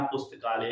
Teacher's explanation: पुस्तक में अ है और आलय का आ है। दोनों मिलकर के आ हो गया। बना पुस्तकालय।